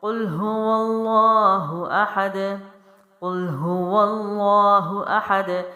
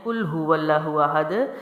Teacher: اگر آپ قاف کو موٹا نہیں پڑھتے تو آپ کاف کو باریک پڑھتے ہیں